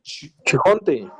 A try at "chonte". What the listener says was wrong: chonte, gracias, chonte, ¿verdad? Es la palabra chonte. Recordemos que para pronunciar cada una de las letras no vamos a agregar ni una vocal, ¿verdad? Es chonte, chonte, ¿verdad? Chonte.